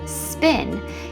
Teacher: a word like spin is produced with an unaspirated P sound, which sounds a bit more like a B sound within S clusters